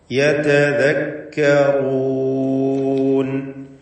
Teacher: യതദക്കറൂൻ, ഈ പദത്തിൽ റാഇന് മാത്രമാണ് തഫ്ഖീം നൽകേണ്ടത്. റാഇനെ തടിപ്പിച്ച് സ്വരഭാരത്തോടെ ഉച്ചരിക്കുക. മറ്റക്ഷരങ്ങൾക്കൊക്കെ തർഖീഖാണ് എന്നതും ശ്രദ്ധിക്കുക.